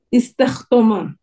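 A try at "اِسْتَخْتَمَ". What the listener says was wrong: Bukan istahto, tapi istahta. Huruf ta.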